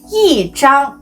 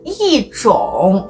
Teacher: If 一 is followed by a syllable in the first, second, or third tone, it changes to the fourth tone